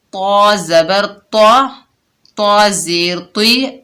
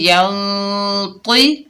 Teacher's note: طا جو ہے حروف استعالی میں سے ہے، موٹا ادا کریں گے